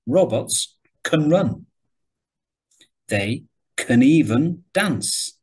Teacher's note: So you can see here the keywords, robots, run, they're stressed. And can becomes, with the schwa, can.